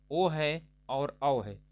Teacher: आवृत मुखी है आवृत मुखी का मतलब होता है कि जिसको उच्चारित करने पर मुख का आकार यानी ओठ का आकार वृत के आकार बन जाता है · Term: वृत्त मुखी